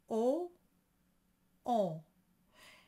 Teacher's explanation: make sure that it's a closed o phonetically closed but on the inside you should feel like you're really stretching